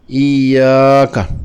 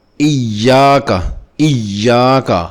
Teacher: اس قاعدہ کی مثالوں میں سب سے پہلے سورہ فاتحہ کی 4 آیت کو لیتے ہیں، جس میں 2 دفعہ یا مشددہ ہے، جس کو نبر کے قاعدہ سے زور دے کر پڑھنا ہوتا ہے